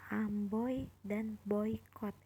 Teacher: OI, dia ada di kata amboy dan boykot, perpaduan vokal O dan I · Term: diftong